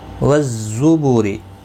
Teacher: ز حروف صفیریہ کا حرف ہے، تھوڑا سختی کے ساتھ پڑھیں